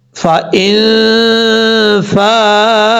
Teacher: ایک الف کی مقدار غنہ کر کے پڑھیں گے نون ساکن کا اخفا کرتے ہوئے. فَإِن فَاءُوا، یہاں حمزہ کے بعد بھی واو ہے، واو مدہ، ایک الف کی مقدار اس کو لمبا کر کے پڑھیں گے.